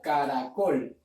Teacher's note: la mayor fuerza de voz, o la sílaba tónica, es col